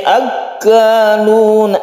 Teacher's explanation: Samma'una lil kadhibi akalun. Akan tasydid kaf, ini kita tekan ke kafnya ya.